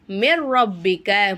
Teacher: ஒரு எழுத்தை இன்னொரு எழுத்தோட ஜாயின் பண்ணி குன்னா செய்யாமல் ஓதணும் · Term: இதகாம் பெலாகுன்னா